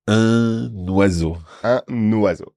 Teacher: We keep the nasal sound and then stick an N in front. Not in actual fact, we don't write it down, but in our heads, we put an N at the beginning of the next word that starts with a vowel.